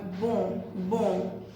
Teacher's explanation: Mas ON em francês sempre vai ter esse som de on, meio anasalado, tá? É mais anasalado do que o nosso. A gente não tem muito esse fonema anasalado igual do francês, né?